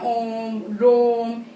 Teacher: इसको बोलते समय हर्ष स्वर से तिगुना समय लगता है, तो ये प्लुत स्वर है।